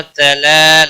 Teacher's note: تلا لام کے اوپر کھڑی زبر ہے، 1 الف کے برابر کھینچ کر پڑھیں گے